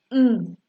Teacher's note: The oral passages is blocked by the closing the lips. Mm is a bilabial sound.